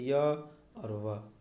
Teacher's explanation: जैसे य और व, बिना संघर्ष किए वह डायरेक्ट निकलता है। इनके उच्चारण में स्वरों से मिलता जुलता प्रयत्न करना पड़ता है, इसीलिए इन्हें अर्धस्वर भी कहते हैं